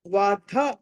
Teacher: మళ్ళీ మహాప్రాణం వత్తి పలకాలి